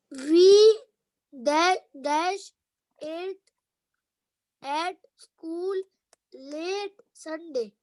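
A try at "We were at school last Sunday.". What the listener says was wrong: No, L-A-S-T. Last. Not late. Last Sunday.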